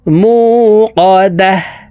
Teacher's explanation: এখানে গোলতা আছে গোলতা ওয়াকফুর ক্ষেত্রে হার উচ্চারণ করে পড়তে হবে ওয়াকফুর ক্ষেত্রে যখন গোলতা থাকবে তখন এই গোলতাকে সাকিন করে হার উচ্চারণ করতে হবে